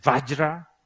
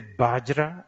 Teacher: Indians, they say Vajra. Nepali people say Bajra.